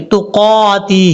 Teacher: ہا کے نیچے کھڑی زیر ہے اس لیے اس کو لمبا کریں گے